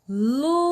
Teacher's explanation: o lu é a sílaba tônica. O zes, sílaba átona. Então, o E faz parte aí da sílaba átona, que vai ser a vogal temática.